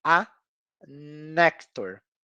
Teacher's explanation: é como se esse n fizesse parte da mesma sílaba do A